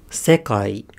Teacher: it's not that there's stress on that initial accent it's that there's a higher pitch on that accent so it's thick I say high high low low so the